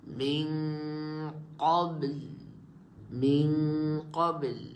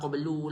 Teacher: Jangan sukun dengan sukun a sukun asli saja. Kena sukun dengan sukun arid juga. Yang huruf terakhir tu wajib kita kena sukun.